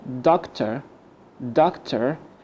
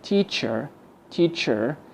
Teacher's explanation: And also we can replace OR like doctor, doctor, and ER like teacher, teacher. We can replace the OR and ER with schwa. ممكن نستبدل ال OR وال ER in the British accent with the schwa. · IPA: ə